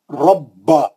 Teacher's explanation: با کو سختی سے پڑھیں گے, تشدید ہے, دو با ہے اس میں